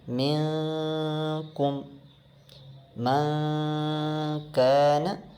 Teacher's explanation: اخفا مین hiding, یعنی نون ساکن اور نون تنوین کے بعد اگر اخفا لیٹرز میں سے کوئی ایک لیٹر آ جائے تو وہاں پر ہم نون ساکن اور تنوین میں اخفا کریں گے، یعنی نون ساکن اور تنوین کے ساؤنڈ کو ہم چھپا کے پڑھیں گے